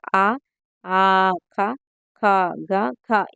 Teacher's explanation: కంఠం నుండి పలికే అక్షరాలు ఏంటంటే కంట్యాలు. ఆ, ఆ, క, ఖ, గ, ఘ ఇవన్నీ కూడా కంట్యాలండి.